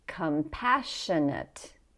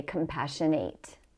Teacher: Notice that the ate sounds like ut with the schwa vowel.